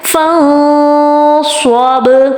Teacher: نون ساکن کے بعد صاد آ رہا ہے، نون کی آواز کو چھپانا ہے